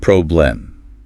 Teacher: When you say the word problem, that E isn't a short E. It's a schwa. Problem. It's almost just a quick grunt, like in or camera.